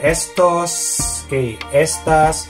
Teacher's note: so the stress is on the first syllable